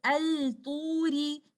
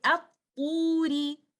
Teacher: In the next example, ta is one of those 14 letters where you do idgham shamsi. You will not recite al-turi.